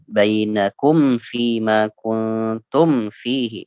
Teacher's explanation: hati-hati dengan mim sukun, jangan sampai ditahan